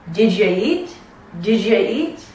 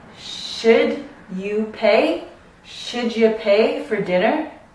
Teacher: when the end of one word ends with a D, and the start of the next one begins with a Y, in between you need to insert this j sound, right? So it's kind of like did ya, j.